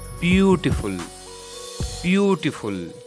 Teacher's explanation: stress will be on first syllable